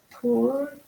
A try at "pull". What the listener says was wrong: Not too much. So yeah, not if you stress it a little bit too much, it will sound like pool. So pool and pull.